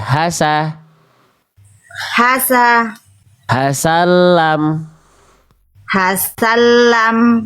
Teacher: yang ditekannya tasdidnya di huruf lam bukan di huruf sin.